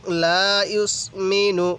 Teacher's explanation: নুন সাকিনটা নাকের বাঁশি দ্বারা গুনাহ করব